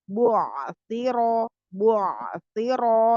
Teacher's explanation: rohnya tebal karena berharokat fathah